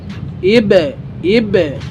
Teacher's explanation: কল কলার হরফ bounce করতে হবে বা তে